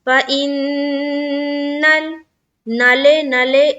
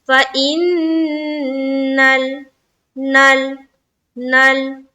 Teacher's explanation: لام کی جو مخرج ہے نا وہاں پر جا کر آواز بالکل رک جانی چاہیے